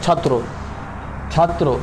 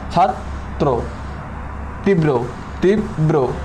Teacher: র যে ব্যঞ্জনের সাথে যুক্ত থাকে ওই ব্যঞ্জনের দ্বিতীয় উচ্চারণ হবে